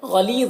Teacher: गाइन को पुर पढ़ना है, उर्फ़ मुस्तालिया में से है और ली में या मद्दा है, इसे एक अलिफ के बराबर खींच कर पढ़ेंगे.